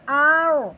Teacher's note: اب ہم نے کیسے پڑھنا ہے، اب پیچھے بھی زبر ہے یعنی کہ را موٹی، آگے بھی موٹا حروف ہے، یعنی کہ دونوں باتیں پائے گی، جس کی وجہ سے را کو پر پڑھیں گے یعنی کہ موٹا کر کے۔ حمزہ را زبر آر، غود زبر غو، آر غو، میم کے نیچے زیر ہے، میم زیر می، ہا کھڑی زبر ہا، می ہا.